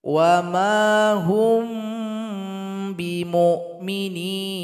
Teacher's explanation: cara membaca Ikhfa Syafawi Ini mesti dibaca dengung